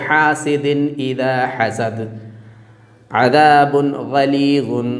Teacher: اور نون ساکن کے نون کو ظاہر کر کے پڑھیں گے، بلا غنہ کے پڑھیں گے، یعنی ناک میں آواز نہ جانے پائے، بالکل خالص نون ظاہر ہو